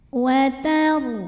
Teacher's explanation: Huruf ra sukun dibunyikan secara tafkhim karena huruf sebelumnya yang ta berbaris fathah. Cara membaca ra-nya ini adalah ditebalkan. Cara menebalkannya adalah dengan mengangkat pangkal lidah kita.